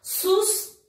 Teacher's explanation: sus é a sílaba tônica da palavra susto